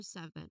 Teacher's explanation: Now when it comes to pronunciation uh the word seven which is as I've mentioned earlier um it is a twocllable word where the first syllable really carries the primary stress